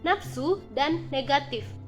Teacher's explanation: fonem F dilafalkan menjadi p